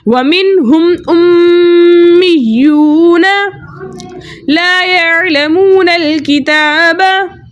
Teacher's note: वाव साकिन से पहले किसी भी हर्फ के ऊपर पेश हो ऐसा वाव मद्दा कहलाता है। वाव मद्दा को 2 हरकत की मिकदार खींच कर पढ़ते हैं · नून के ऊपर ज़बर है, ज़बर को बगैर कैचे बगैर झटका दी मुतवस्सित और मारूफ तरीके से पढ़ते हैं। इसके अलावा मीम मुशद्दद में हम हमेशा गुन्ना करते हैं